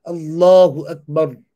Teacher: And if you're reciting Allahu Akbar on its own, Allah would be full mouth.